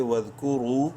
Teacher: کاف پیش کو را واو پیش رو. را کو منہ بھر کے پڑھتے ہوئے ایک الف کے برابر لمبا کریں گے واو مدہ کی وجہ سے